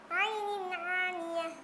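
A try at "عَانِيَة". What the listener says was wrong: Nah inti di situ bukan Ain. Aniyah. Soalnya nanti akan beda maknanya.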